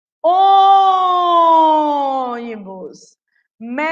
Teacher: Proparoxítona, a sílaba mais forte é a antepenúltima.